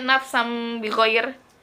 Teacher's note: nun matinya atau tanwin itu diganti menjadi huruf mim sukun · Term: Iklab